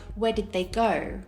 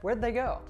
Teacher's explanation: when there's a D before a TH sound, the TH sounds like a D. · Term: assimilation